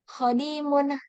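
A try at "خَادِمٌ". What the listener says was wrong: Ainal mad wa aina khadimun. khadimun.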